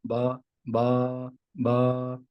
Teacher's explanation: با دونوں ہونٹوں کے تر حصے سے ادا ہوتا ہے